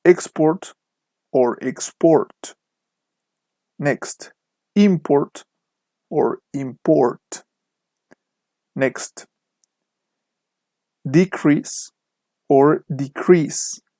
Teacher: with nouns the stress is on the first syllable